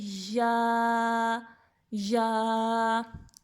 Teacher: اور یا کا مخرج کیا ہے وسط زبان اور اوپر کا تالو. وسط زبان اور اوپر کا تالو.